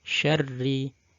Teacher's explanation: yang bertasydid berharokat kasroh, maka dia dibaca tarqiq, walaupun dia misalnya didahului oleh harokat fathah.